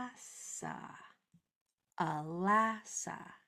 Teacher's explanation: only that middle syllable has the option of being stressed or accented so I'm going to say that part stronger